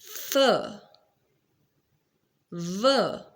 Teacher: labiodental when lower lip touches the upper teeth.